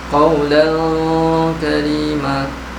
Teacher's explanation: fathah tain dibaca samar dan dengung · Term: ikhfa haqiqi